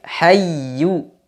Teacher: Ketemu dengan huruf ya yang bertasydid. Huruf ya ketika bertasydid dinabr, dihentak sedikit. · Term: ya tasdid